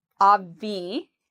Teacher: So this word can be a bit difficult for some Spanish speakers. So we put the stress on the first part, ob, and then we have the V, ob-V, and notice how my lips go under my teeth, ob-V, asli, obviously, obviously.